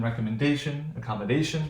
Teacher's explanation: right now in both of these words these are long words these are five syllable words we have three syllables before the primary stress